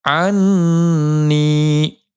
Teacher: یا مدہ ہونے کی وجہ سے نون کو ایک الف کی مقدار کھینچیں گے